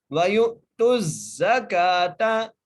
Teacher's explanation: زا کو سیٹی کے آواز سے پڑھنا ہے ، اور کاف کو ایک الف کی مقدار کھینچ کے پڑھنا · تا کو زا سے ملانا ہے